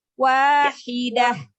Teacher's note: Haknya yang dari tengah tenggorokan.